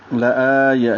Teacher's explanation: لآیہ میں آ کو 2 حرکات لمبا کریں گے اور یا کو لمبا نہیں کریں گے